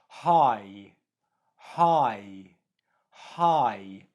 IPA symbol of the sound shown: aɪ